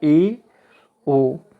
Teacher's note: जिन स्वरों के उच्चारण में मुख द्वार जो है वो आधा बंद रहता है, जैसे ए, ओ, इसमें मुख द्वार आधा बंद रहता है, इसीलिए हम इसको अर्ध संवृत कहते हैं।